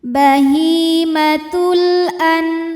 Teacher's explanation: Kemudian ada hukum alif lam qamariah. Karena alif lam menghadapi huruf qamariah yaitu hamzah. Maka lam sukun ini kita bunyikan dengan jelas.